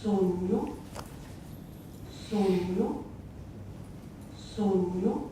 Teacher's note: it has a palatalized N between the vowels